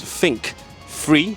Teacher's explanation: we didn't replace the th with a s, but rather with a f